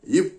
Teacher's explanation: உதடுகளை மூடி காற்றை மார்பிலிருந்து வெளியிட்டால் இப் என்ற ஒளி பிறக்கும். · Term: வல்லின ஒளி